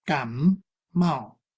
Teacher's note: The word 感冒, when continuous pronunciation, the sound of this word has become 感冒. It is influenced by the initial consonant of next word. The ending of the first word 感 became M. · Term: assimilation